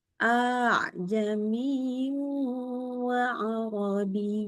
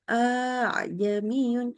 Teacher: Nah, itu cara bacanya dengan mad. Jadi, a-nya panjang.